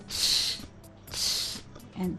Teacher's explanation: Que es linguo palatal, a la primera parte del paladar. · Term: la ch